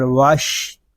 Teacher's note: واو شین زبر وش، یہاں الف و لام ان کو ہم نہیں پڑھیں گے، واو کو شین کے ساتھ ملا دیں گے۔